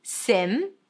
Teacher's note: It's an S sound, relaxed I, and then an M.